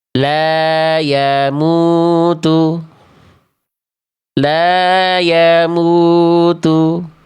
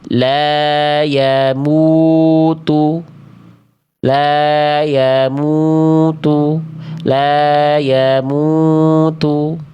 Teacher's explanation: salahnya adalah karena wau sukunnya atau domahnya tak kita muncungkan, tak kita monyongkan